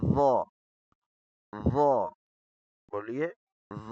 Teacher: ظ موٹا کر کے اور نرمی کے ساتھ نرم زبان کی نوک اوپر والے دانتوں کی پشت پہ نرمی سے لگے گی